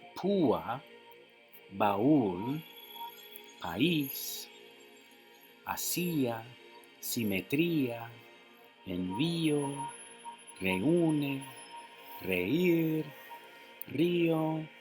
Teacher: the pronunciation tells you that the vowels are not forming a single syllable